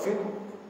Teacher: Suara tak terlepas. Tapi dalam masa yang sama dia ada angin. Dia ada hams. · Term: syiddah